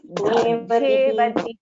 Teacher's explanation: Just this Shevadhihi, Dha is a Mahaprana.